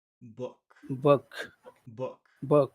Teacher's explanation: And when you say book, you have to give a kiss, but there's no kiss here. You don't use your lips to make book. That's just back down in your throat only.